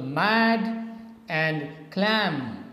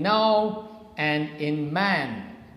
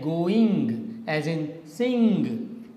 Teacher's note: air comes out from your nasal cavity, from your nose, these sounds are known as nasal sounds. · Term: nasal consonants